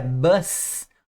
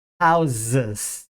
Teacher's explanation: Mas quando você coloca essas palavras no plural, esse S passa a ter um som de Z. Ele passa a ser vozeado.